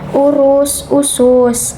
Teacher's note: tinggi, bawah, belakang dengan posisi mulut semi tertutup